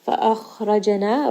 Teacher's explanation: فأخرجنا, Ra is going to be heavy, Jim has qalqala, it is part of Qutb Jad, give it a little bit of bounce.